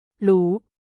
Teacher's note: In Thai pronunciation, the R sound often changes to an L sound in casual or everyday spoken language.